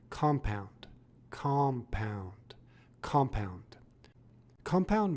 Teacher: as a noun it is pronounced compound with the emphasis on the first syllable